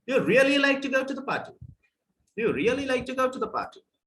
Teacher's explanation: the rising tone starts from the word really, and it continues till the end, till the tail, it continues.